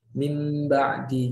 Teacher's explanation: Jadi seperti kurang lebih bacaannya seperti kita membaca mim sukun. Nah, ketika nun sukun bertemu dengan ba, maka bacaannya seperti nun sukunnya melebur ke dalam ba sehingga bunyinya seperti mim · Menjadi huruf mim. Membacanya seolah-olah kita meleburkan nun sukun menjadi huruf mim dengan panjang dengunnya 2 harokat. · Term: iklab, hukum iklab